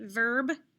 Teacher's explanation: i only hear the sounds v r and b